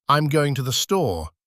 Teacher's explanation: in the phrase, I'm going to the store, the words going and store carry the main weight. Unstressed words contract and shorten.